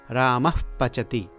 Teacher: जैसे एक वाक्य है रामः और पचति। यहां पर विसर्ग के पश्चात प बोलते समय हल्का सा फ सुनाई देता है, हल्का सा फकार सुनाई देता है, जैसे कि रामः पचति। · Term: उपद्मानीय, उपदमानीय